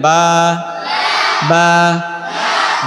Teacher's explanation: দুইটা ঠোঁট মিশাবেন, ছেড়ে দিবেন